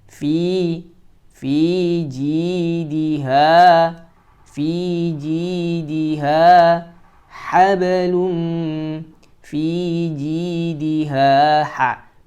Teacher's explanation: Fi 2 harokat, ji 2 harokat, diha 2 harokat.